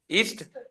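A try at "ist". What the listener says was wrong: ईस्ट नहीं, ना ना, एस्ट।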